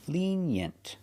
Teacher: Put the stress on the first syllable.